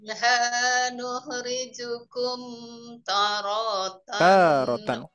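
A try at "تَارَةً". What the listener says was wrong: Taknya masih kurang? Taknya masih kurang, Bu. Tarotan.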